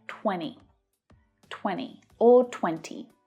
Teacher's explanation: So when spoken by native speakers, the T sound might disappear.